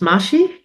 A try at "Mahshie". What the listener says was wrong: It's actually looks like Mashi with M A H S H I E, but it's Mashy. Think mashed potatoes.